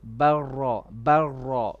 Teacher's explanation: when you have a lam sakin before a ra, normally we would have to do idgham and you drop the lam.